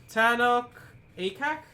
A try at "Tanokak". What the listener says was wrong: It's TANOKAK. It's all one word.